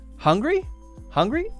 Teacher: Note the intonation of my voice rising up.